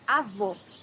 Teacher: here you have a closed o